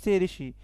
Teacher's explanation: ऋषि ऋषि इसका मूर्धा से उच्चारण होता है